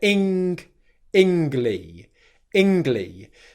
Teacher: in standard dictionary BBC English pronunciation, if you want to call it that, you don't pronounce the 'G' sound